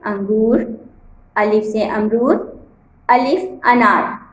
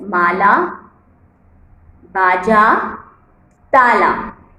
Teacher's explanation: آ۔ یعنی کہ الف جب شروع میں آتا ہے تو اس کی آواز چھوٹی ہوتی ہے اور آخر میں آتا ہے تو اس کی آواز لمبی ہو جاتی ہے